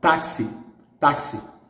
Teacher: the stress here is in the penultimate